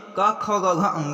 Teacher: तो पहले हैं 2 अघोष अघोष, फिर पीछे के 3 सघोष वर्ण होते हैं। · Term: कंठ स्वर